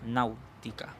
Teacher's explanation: Luego sería lo mismo aquí, pero en este caso primero está la vocal abierta y después la vocal cerrada. Y aquí la A es la que lleva la mayor fuerza de voz